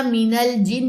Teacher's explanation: مینل، حمزہ وصلی دوران کلام حذف ہو جائے گا. مینل جن، نون تشدید کا غنہ، نون کی زیر کو لمبا نہیں کرنا